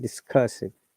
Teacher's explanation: So if you remember, then in British IPA, we do not pronounce R